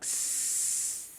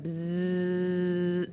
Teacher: Do you feel the vibration? Okay, that's your vocal cords moving and working when you make the zzz sound